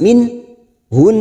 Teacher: Min hun, nun yang bertasdid dan kita membaca waqaf di sini gunnah mustaddada yang ditekan selama 3 harokat, bukan dipanjangkan tetapi ditekan dan mendengung